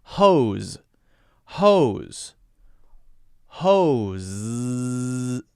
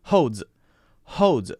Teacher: for 10 seconds can you go no it's very difficult but very soft and very natural has to be that long soft sound where your tongue is vibrating at the upper part of your mouth which is called your hard palate it has to really vibrate but not too hard so that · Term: Z